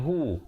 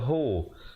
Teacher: Ha baris depan kita bunyikan hu, kita tak baca ho. Jadi bila bertemu mim jadi hum, ya.